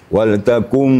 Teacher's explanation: Kapasitas dengungnya ya 3 ketukan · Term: idgham bi gunnah